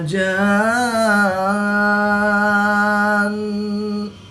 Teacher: نون مشدد میں ہمیشہ غنہ ہوتا ہے تو یہاں پر ہم غنہ آنی کر کے پڑھیں گے۔